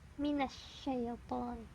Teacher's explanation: huruf shin di sini makhrajnya ada di lidah bagian tengah dengan langit-langit di atasnya.